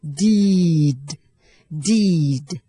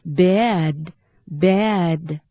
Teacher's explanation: แต่ตัวดีที่ตามหลังสระซึ่งเป็นเสียงสะกดเนี่ยเราออกให้เบานะคะ